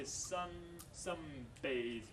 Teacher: Alveolar N becomes bilabial M.